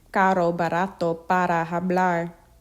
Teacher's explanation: R, the DD in ladder, a single tongue flap.